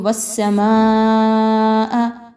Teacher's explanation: ماں پر بڑی مد ہے، اس کو 5 الف کے برابر لمبا کرتے ہوئے پڑھیں گے